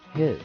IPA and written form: hɪs (hiss)